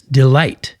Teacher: Iamb foot is a word that uses an unstressed syllable followed by a stressed syllable as in delight. Notice how the first part, d, is not emphasized and light is, delight.